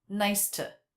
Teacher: The word to was reduced rather than the oo vowel. We had the schwa, nice to.